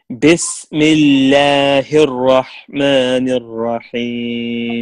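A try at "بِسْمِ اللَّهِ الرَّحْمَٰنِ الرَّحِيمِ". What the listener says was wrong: Brother, we need to make sure that we are giving each letter, it's right. The letter has rights. Like kasra and the time of pronunciation. So we have to give the letter its rights. You can say mal, mal, no, we have to make a real kasra in the letter. Bismil, mi, mil, bismillahir rahmanir rahim.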